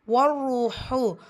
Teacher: ஷத்தா இருக்க அழுத்தம் கொடுக்கணும். வாவ் மத்தா இருக்குது. 2 ஹரக்கத்தளவு நீட்டம் கொடுக்கணும்